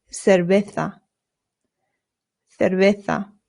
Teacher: the v's in Spanish make a very light b sound. Not cera. Your lips just touch very lightly when you make the V sound.